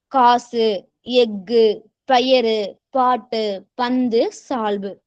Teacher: ஒரு சொல்லினுடைய கடைசியில இந்த உகரங்கள் சேர்ந்து வந்துச்சு அப்படின்னா ஒரு மாத்திரை அளவிலிருந்து அரை மாத்திரை அளவா குறைஞ்சு ஒலிக்கும் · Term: குற்றிய லுகரம்